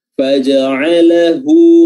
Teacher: Lalu terakhirnya ada huruf ha dhammah ya, namanya ha dhamir atau ha al-kinayah. Dan di sini ada mad namanya mad silah qasirah yang panjangnya 2 harokat saja. Faja'alahu ya, hu diperhatikan dengan baik ya, dhammahnya, bibir dimonyongkan.